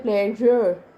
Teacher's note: और जब आप बोलते हैं प्लेजर, तो आपका टिप ऑफ टंग और पीछे चला जाता है और राउंडेड हो जाता है